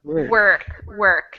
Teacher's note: work is really almost like no vowel